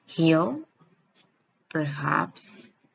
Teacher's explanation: The sound H is voiceless glottal fricative.